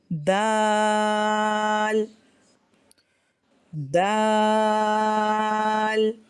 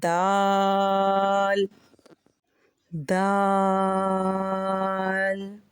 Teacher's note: ہماری زبان جو ہے وہ سامنے والے 2 دانتوں کے جڑوں کے کناروں سے ٹچ ہو رہی ہے، تو ہمارا دال وہاں سے ادا ہوگا۔